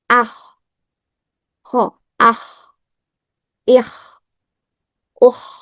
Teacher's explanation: Kemudian ketika ko bersukun karena memiliki sifat hams dan rakwah jangan lupa dialirkan suara dan udaranya